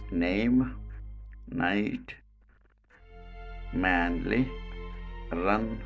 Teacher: so this is called alveolar voiced nasal consonant